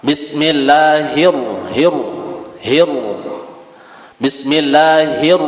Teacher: setelahnya huruf ro bertasydid itu dibaca takhim karena ro itu semuk E apa Huruf istilla dia jadi bacaan